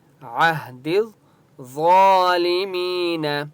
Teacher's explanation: ضا کے اوپر کھڑا زبر ہے، ایک الف کی مقدار کھینچ کر پڑھیں گے ، اور ضا مستعلیہ میں سے اس لیے ضا کو موٹا · ملائیں گے، دز دال کو ضا کے ساتھ ملائیں گے، یا الف اور لام کو نہیں پڑھیں گے کیونکہ ضا کے اوپر تشدید ہے ، ٹھیک ہے، عہد الظالمین، ضا کے اوپر کھڑا زبر ہے،